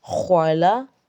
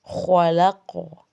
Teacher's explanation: اس میں خاص خیال رکھیں کہیں خا قاف چونکہ موٹے حروف ہیں، ان کے موٹا کرنے کی وجہ سے آپ کہیں لام کو بھی اندر موٹا نہ کر جائیں، اس چیز کا خیال رکھیں۔ لام ہرگز بھی موٹا نہیں ہے لیکن خا اور قاف کے مخارج موٹے ہیں